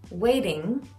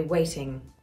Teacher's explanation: Waiting, what we call a flat T, waiting, that we do in America all the time. In this class of England, you would say waiting.